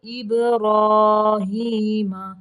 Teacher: با کو قلقلہ کریں گے